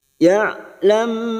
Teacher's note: biasanya dibaca jelas sekarang karena bertemu ba namanya bacaan Ikhfa Syafawi bertemunya mim sukun dengan ba kita dengungkan dan ditahan selama tiga harakat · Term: Ikfa Syafawi